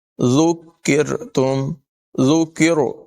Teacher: را جو ہے یہاں پر باریک ادا ہوگی